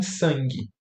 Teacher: A nasal não é mã nem n, ela é com a boca aberta, né? A gente chama essa de nasal velar.